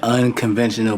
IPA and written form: ˌʌn.kənˈven.ʃən.əl (Unconventional)